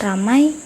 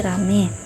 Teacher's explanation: merupakan perubahan dua bunyi vokal menjadi vokal tunggal